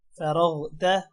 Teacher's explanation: فا را غین زبر رغ فرغ تا زبر تا فرغ تا را بھی موٹا ہوگا غین بھی موٹا ہوگا